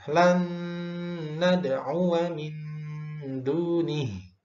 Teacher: Jadi nun sukun bertemu nun itu idgham bi gunnah, maka dibaca dengung yang lama.